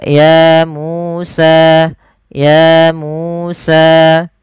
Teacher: harus sama panjangnya sepanjang dua harakat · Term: Mad